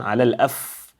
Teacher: And also pay attention to the fa. The fa must give you that sound, whispering sound, على الأف. And in order to do that, the tips of your upper teeth must touch the inner side of your lower lip.